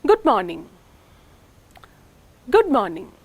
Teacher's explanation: the falling tone on the first syllable of morning suggests more excitement or enthusiasm on the part of the speaker